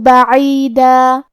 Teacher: عین کی ادائیگی حلق کے درمیان والے حصے سے ہے. آخری میں دال پہ تنوین زبر ہے.